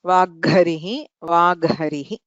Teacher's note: हकारः संवारनाद घोष महाप्राण प्रयत्नयुक्तः, तादृशः वर्गचतुर्थः आदेशः भवति, विकल्पेन भवति।